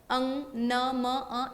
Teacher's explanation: मुंह के साथ-साथ नोज यानी कि नासिका का भी उपयोग होता है। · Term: नासिक्य वर्णेशु